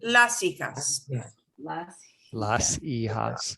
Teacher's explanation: we don't pronounce the H, and I'm not hearing any H's except when you get to the J, because that J, the J, see, that sounds like an H, but not the H itself.